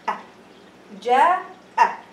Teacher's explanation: The bottom of your throat. The makhraj for hamza is the bottom of your throat.